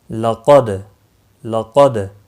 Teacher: دال ساکن پر قلقلہ ہوگا، قاف موٹا پڑا جائے گا۔ اب دیکھو یہاں پر قاف کے اوپر حرکت ہے اس لیے اس پر قلقلہ نہیں ہوگا، دال ساکن ہے اس پر قلقلہ ہوگا۔